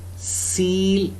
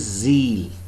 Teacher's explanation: the distinctive feature, voice, distinguishes S from Z. Remember, these two are contrasting phonemes.